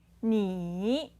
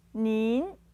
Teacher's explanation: 您， So if you compare this with the normal version of you, which would be, 你， you have one third tone, you normal, 你， and a second tone for the more polite version and together with an N sound in the end.